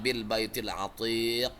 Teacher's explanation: sementara kubro dia memantulnya besar karena dia ada di akhir kalimat